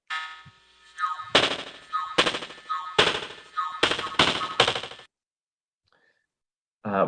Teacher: So first, this is what in US beatboxing is sometimes called a spit snare, a voiceless lingual egressive bilabial affricate in this case. And it's produced by full tongue body closure against the velum, a full labial closure. And I'm calling it lingual egressive, but there's, I'm sure, other buccal squeezing and other things going on to express the air.